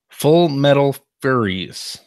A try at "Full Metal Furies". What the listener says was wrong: No, Furies. Furies. Not furries. Every time I see that title, I initially read it as Full Metal Furries, but it's Furies.